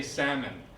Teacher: You don't say salmon, or salmon I mean, you just say salmon, no L.